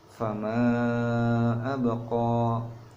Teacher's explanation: dibacanya sekitar panjangnya 4-5 harokat. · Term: mad jaiz munfasil